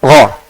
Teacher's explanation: gha, isti'la saja, pangkal lidah saja naik ke langit atas